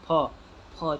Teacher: आपका होठ देखिए दोनों चिपक जा रहा है फेविकोल की तरफ, फिर अपने आप छूट जा रहा है। जब आप मतलब आपके करने से ही होता है, ऐसा नहीं है कि अपने आप चिपक जाएगा हट जाएगा। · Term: ओष्ठ ध्वनियाँ